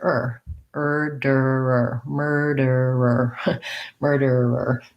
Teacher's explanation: the front of my tongue has to move a little to get that d but i can mostly be back in that er position